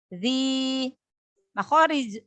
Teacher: Makhorijul huruf za itu ujung lidah bertemu dengan ujung gigi seri atas